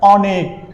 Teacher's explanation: অর উচ্চারণটা কি সংবৃত অর্থাৎ স্বাভাবিক হচ্ছে